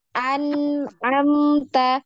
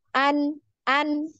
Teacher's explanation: untuk huruf nun tadi ya sama mim ini harus sama panjangnya